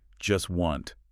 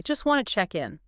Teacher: the speaker doesn't pronounce the T sound in either word. Not in just and not in wanted. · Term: consonant reduction